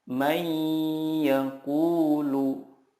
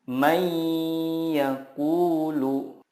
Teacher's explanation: meleburkan nun sukun ke huruf berikutnya dan disertai gunnah yang dipanjangkan 2-3 harokat. Contohnya, nun sukun bertemu ya, may yaqulu.